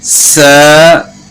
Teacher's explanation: ثا پڑھیں گے تو اس میں آپ نے یہ دھیان کرنا ہے کہ زبان کی نوک سامنے والے جو نیچے کے دو دانت ہیں ان کے ساتھ ٹچ نہ ہو. اگر سامنے والے نیچے دانتوں کے ساتھ زبان ٹچ ہو گئی تو پھر سین کی آواز ہو جائے گی، یعنی سیٹی کی مثل آواز ہو گئی تو سین بن جائے گا